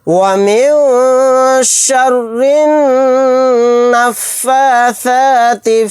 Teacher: شین کو را میں ملا دیں گے، را کو باریک پڑھیں گے کیونکہ را کے نیچے زیر ہے۔ را کو نون میں ملا دیں گے، یہ الف اور لام نہیں پڑھا جائے گا، یہاں پر نون کے اوپر تشدید ہے، یہاں پر ہم غنہ کر کے پڑھیں گے۔